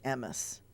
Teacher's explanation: It's very often at the end of words. Emet in Yiddish is emes because they make the T soft, so it's a S sound.